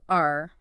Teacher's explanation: The R sound, made in the back of the mouth. R.